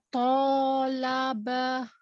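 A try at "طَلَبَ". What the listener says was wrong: Tonya tebalkan. Tidak monyong. Tetap dibuka mulutnya. Tolaba. Tolaba.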